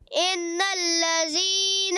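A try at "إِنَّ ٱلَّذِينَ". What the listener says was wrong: غنہ بھی پورا کرنا ہے، ان الذین، لذین ذال، ان الذین،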